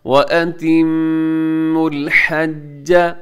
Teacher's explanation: जीम के ऊपर तशदीद है तो तशदीद वाले हर्फ को थोड़ा सा देर लगा के पढ़ते हैं, ज़रा मजबूती से पढ़ते हैं